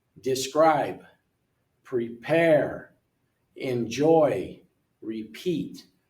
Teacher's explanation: Most verbs, the second syllable is louder and longer. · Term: Word stress